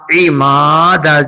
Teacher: میم کو کھینچا ہے زبر کے بعد الف آنے کی وجہ سے